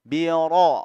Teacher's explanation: ro-nya tebal karena ro berharokat fathah